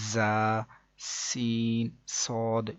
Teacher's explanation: اس کے بعد مزید آگے ہم کو بتایا گیا کہ ان 3 حروف یعنی کہ زا، سین، صاد کو ادا کرتے وقت سیٹی کی طرح کی آواز نکلتی ہے، اس لیے ان حروف کو حروف صفیریہ یعنی سیٹی والے حروف بھی کہتے ہیں، جیسے کہ زا، سین، صاد۔